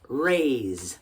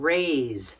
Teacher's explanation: it's got that Z at the end you got to feel it can you do it yeah it's that little vibration